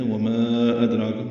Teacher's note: حمزہ کو دال سے ملانا ہے، دال ساکن ہے، قلقلہ ہوگا